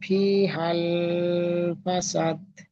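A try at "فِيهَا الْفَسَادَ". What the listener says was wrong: ফি হাল, এখানে টান হয়ে যাচ্ছে। ফি হাল, জলদি পড়তে হবে। ফি টান হবে, কিন্তু হাল এখানে কোনো টান হবে না বা গণ্য হবে না, বুঝতে পারছেন? ফি হাল ফাসাদ।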